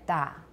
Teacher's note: da for the T sound with no aspiration